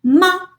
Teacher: Ma is bilabial, no problem there because, I mean, the obstruction is caused with the lips.